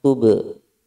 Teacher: ada ba sukun di tengah, tube, qalqalah sugro.